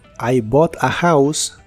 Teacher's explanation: si le sigue una palabra que empieza con vocal en inglés americano puedes pronunciar la t como r